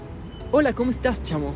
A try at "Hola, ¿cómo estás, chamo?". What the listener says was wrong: No, suéltalo más, suéltate. A ver, pon así. Hola, ¿cómo estás, chamo? Algo así. Lo ideal es que no mandibulees mucho.